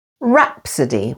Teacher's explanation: rapid with the stress on the first syllable